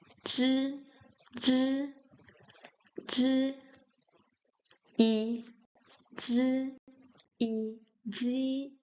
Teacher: The sound in Chinese is more near to a z than to an actual J sound.